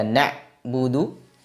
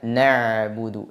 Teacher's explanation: suara pada pengucapan huruf Ain dialirkan sebagian tidak ditahan semuanya tidak dibaca na buudu seperti huruf hamzah tapi dibaca nabudu dialirkan